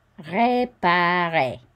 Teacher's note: And we don't pronounce the final R.